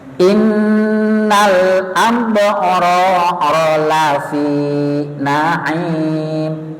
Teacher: Lafi pun mboten disambungkan n, Mbak. Mboten ada tasdidnya.